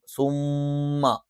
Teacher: രണ്ടു ചുണ്ടുകൾ മൃതുവായി അടച്ചുവെച്ചുകൊണ്ടാണ് അത് മണിക്കുമ്പോൾ